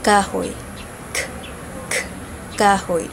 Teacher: ang velar ang titik na k at ang paraan ng artikulasyon nito ay pasara na walang tunog